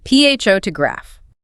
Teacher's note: The noun is pronounced with the stress on the first syllable